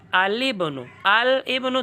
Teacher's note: ابن اور اسم پر الف لام داخل کرو تو لام کو زیر دے کر آگے ملانا ہے با کے ساتھ. الابن، الابن تو لام کو زیر دو، با کے ساتھ ملاؤ الابن.